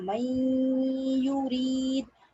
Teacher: नून की भी आवाज आ रही है और या की भी आ रही है। इसका मतलब कंप्लीट मुकम्मल मर्जिंग नहीं है, मुकम्मल तौर पे मिल नहीं रहा, मगर उसमें गुन्ना हो रहा है।